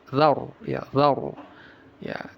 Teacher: Tapi jangan mempengaruhi huruf setelahnya. Jadi ee ro ini tebal dibaca tapi dalalnya jangan tebal. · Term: Ro tebal tafkhim